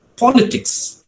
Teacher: In politics, you see the letters given in the red color, right? So the stress falls on the first syllable, politics.